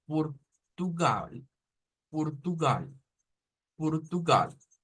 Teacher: ahora la pronunciación europea usa la r suave · la pronunciación europea usa la R suave. Entonces, esta sí suena casi como el español. Lo único que cambia es que en vez de una O, se dice una U.